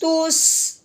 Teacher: سین، سیٹی والی ہم نے آواز نکالنی ہے